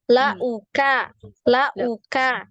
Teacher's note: dibuka lagi mulutnya e di Kaf huruf Kaf ya biar tidak tebal